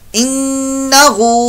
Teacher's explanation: वस्तगफिर, ठीक, आवाज को छोड़ दिया। इन्नहु, नून मुशद्दद का यहां गुन्ना होगा, एक अलिफ 2 हरकत के बराबर